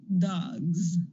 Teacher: to get the S which is a sound with no vibration in the case of dog since that final g has vibration you're going to get vibration and you're going to change S to Z